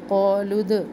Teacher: क़ालू, अब यहाँ पे मैंने क़ालू पढ़ लिया लेकिन जब मिला के पढ़ेंगे, क़ालूद, क़ा अलिफ मद्दा लाम पेश को हम दाल साकिना से मिलाएंगे और दाल पर क़लक़ला करेंगे